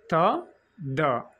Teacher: dental means tip of ద tongue touches against ద upper teeth